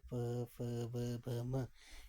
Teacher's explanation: ओष्ठ्य व्यंजन की बात करते हैं, यानी कि दोनों ओठों से जिनका उच्चारण हो रहा है